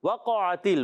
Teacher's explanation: واو کی ادائیگی ہونٹوں کی گولائی سے، قاف پر زبر ہے، عین پر زبر ہے، اور تاکن زیر حرکات کو بغیر کھینچے ادا کرتے ہیں۔